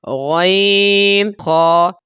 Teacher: حلق کے اوپر والے حصے سے ان کو ادا کیا جاتا ہے